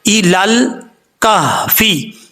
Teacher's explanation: لام کے بعد لام ہے، بیچ میں جو یا اور الف آ رہا ہے اس کو ہم گرا دیں گے، چھوڑ دیں گے.